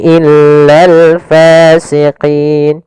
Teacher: Kemudian pada lafal fasiqin, pada lafal fa ada mad tabi'i yaitu fathah bertemu dengan alif, panjangnya 2 harakat. Hati-hati dalam melafalkan fa, harus ada nafas yang dikeluarkan